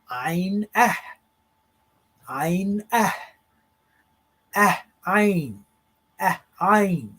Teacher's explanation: it's a soft glottal stop